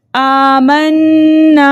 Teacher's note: نون مشدد کو ہم ہمیشہ غننے کے ساتھ پڑھتے ہیں، حرکتیں مقدار غنہ کر کے پڑھتے ہیں، اور پھر الف خالی اس سے پہلے زبر ہے، ایسا الف مدہ کہلاتا ہے، الف مدہ کو 2 حرکت کی مقدار کھینچ کر پڑھتے ہیں، اس لیے ہم نے کھینچ کر پڑھا۔